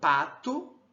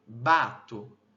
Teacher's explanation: No ponto bilabial, a diferença, né, é o vozeamento, porque nós temos oclusivas, bilabiais, porém a diferença das bilabiais está no vozeamento